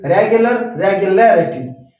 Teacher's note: There is a stress, there is force on R when I pronounce it. And regularity, the stress will come before L.